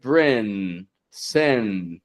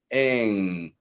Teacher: I'm not bringing my tongue up like brin, sin, but I'm pulling it back, ing. The sound fades off. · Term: NG tongue position